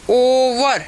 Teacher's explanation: Central अनराउंडेड vowel just below half open position to A centralise back rounded vowel just अबाउ half close position. वही जो ऐसे हमने first में लिखा वही सेकंड में आएगा, क्योंकि वही ऊ की तरफ हमारा ये ग्लाइड कर रहा है।